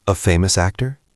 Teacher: Make it rise at the end like a question. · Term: intonation